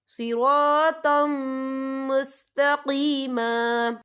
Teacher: और यहाँ देखिए सिरातम, तो आके पर तनवीन है, तनवीन के बाद जो है मीम आ रहा है और मीम जो है हुरूफ़ यरमलून में से है तो यहाँ पर इदगाम होगा तो हम इसे गुन्ने के साथ पढ़ेंगे